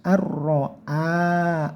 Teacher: Lah nun sukun bertemu ro, ini namanya idgham bila guna. Maksudnya idgham bila guna yaitu dimasukkan langsung ke huruf ro tanpa dengung. Jadi langsung ke ro-nya tebalkan disertai ditekan.